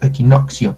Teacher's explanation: la consonante saltillo, la cual es un corte súbito del aire